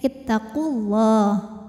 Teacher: kalau wasal gugur madnya Jadi pendek · wasal gugur madnya Jadi pendek ittaqulah namanya takhalus Bil hadfi ya karena pertemuan dua sukun di sini sukunnya wau Sukun dan lam sukun maka yang dilepas adalah wau sukun